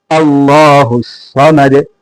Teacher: صمد میں صاد ہے، دانتوں کو نرمی سے ملائے، سیٹی کی آواز سے موٹا پڑھیں